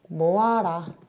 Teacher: 모으다에 있는 용언의 어간 으가 뒤에 아를 만나서 탈락되어 모아라 라고 되는 경우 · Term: 으 탈락